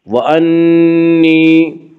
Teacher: وانی، یا مدہ، یا مدہ وہ یا جو ساکن ہو اس سے پہلے زیر ہو، یا مدہ کو 1 الف کے برابر کھینچ کر پڑھیں گے